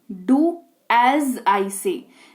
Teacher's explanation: ए S लिखा हुआ है, लेकिन हल्का ज निकलता है